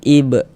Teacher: Dan ini dinamakan dengan qalqalah sughara atau qalqalah kecil karena dia berada di tengah kalimat.